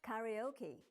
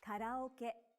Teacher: each syllable in Japanese is pronounced for the same length of time and gets equal stress.